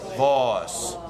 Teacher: So get rid of that diphthong. You just make it one aw, like voice.